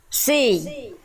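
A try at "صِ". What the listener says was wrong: Sli. Sli. Dorong lagi. Jadi Bunda masih kurang dorong, kurang angkat pangkal lidahnya. lidah dalamnya didorong ke dalam. Sli. Kayak mau nana sesuatu Bunda.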